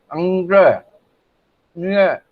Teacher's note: हमारी जीभ एकदम जाकर के तिरछी होती है, और ऊपर जो कोमल तालु है वहां जो मुड़ती है